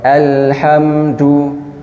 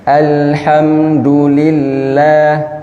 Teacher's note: tidak masuk hidung tapi jelas du dikuatkan dalnya